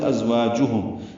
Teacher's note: زا ساکن اس پہ تیز صفیر کی آواز سے اس کو ادا کریں گے